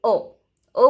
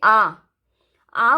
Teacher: ओ बोला फिनिश हो गया, लेकिन हम बोलते आ बोला तो वो थोड़ा सा लंबा हो गया, राइट। उसका प्रोनाउंसिएशन वो हमारे कंठ से निकलता है और थोड़ा सा लंबा हो गया।